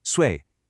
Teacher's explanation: Fourth tone. sharp and falling